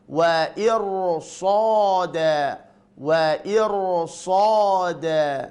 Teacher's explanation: Sebelum ra sukun adalah kasrah, akan tetapi setelah ra sukun ini adalah huruf shad maftuhah berharokat fathah, maka huruf ra dibaca tebal